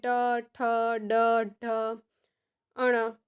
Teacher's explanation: મૂર્ધન્ય એટલે કે મુરધાને અડે છે